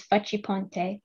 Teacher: stressing the fa darting down in pitch attacking the next syllable the harsh chiseled chip of the chi it's not a soft c and doesn't slide off the tongue lipping the noise forward the pawn bursts through the syllable more